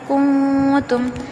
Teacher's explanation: بما کنتم، یہاں پہ دیکھیں نون ساکن کے بعد تا ہے، کنتم، نون کی آواز ناک میں چھپانا ہے اور زبان بالکل مسوڑوں کو نہیں لگنا ہے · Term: اخفاء